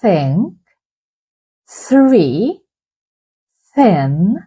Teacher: iškiškite liežuvio galiuką tarp viršutinių ir apatinių dantų ir švelniai puskite orą per liežuvį jeigu girdite švelnų šniptimą tai duslūis garsas